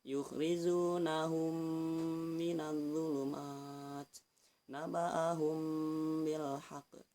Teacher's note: harkat atau satu Alif ya Nah dan cara membacanya itu itu disertai dengan guna yaitu dengung di hidung